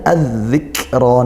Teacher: Padahal di situ ada lam ta'rif, maka hukumnya lamnya dibaca idgham, idgham syamsiyah, masuk ke huruf dzal, huruf syamsiyahnya.